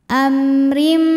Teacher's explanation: hurufnya adalah huruf ro maka mim dibaca dengan jelas a amrim huruf ro dibunyikan secara tarqik karena ro berharakat kasrah tanwin maka dibaca tipis